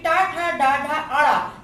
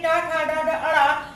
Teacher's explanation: जीभ आपके पीछे थोड़ी मुड़ गई है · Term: मूर्धन्य वर्ण